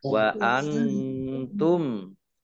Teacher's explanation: Nun sukun bertemu dengan huruf ta, bacaan ikhfa dibaca samar-samar. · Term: izhar safawi